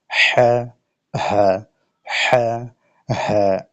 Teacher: আর এই যে ছোট হা, এটা হলো এই হলক বা কণ্ঠনালী যে শুরু আছে সেখান থেকে উচ্চারিত হবে